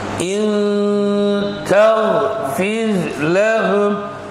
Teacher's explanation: And then when we practice ikhfa, I send the sound to the nose, my nose. There is a vibration.